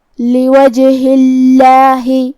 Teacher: لوجہ اللہ، جو کہ ہا کے نیچے زیر ہے، پھر لفظ الجلالہ ہے، تو ہمیں یہاں لفظ الجلالہ کو مطلب کلمت اللہ کو ہلکی آواز میں پڑھنا ہے